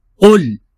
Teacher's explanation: قل قل قل کو ہم اس طریقے سے ادا کریں گے کہ قاف جو کہ دو نقطے ہیں اس کے اوپر، اس قاف کو ہم موٹا کر کے ادا کریں گے، کیونکہ قاف حروف مستعلیہ میں سے ہے، اس کو ہمیشہ پر طریقے سے ادا کیا جائے گا۔